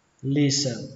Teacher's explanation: Các bạn tưởng tượng ở đây không có âm t mà âm sờ này nó nối sang âm e luôn, đọc là listen.